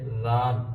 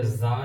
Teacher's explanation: ذال کو نرمی کے ساتھ پڑھیں گے اور زا کی آواز جو ہے یہ تھوڑی سختی کے ساتھ آئے گی